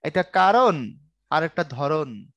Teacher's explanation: ন ন দুটোর মধ্যে উচ্চারণগত কোন পার্থক্য নাই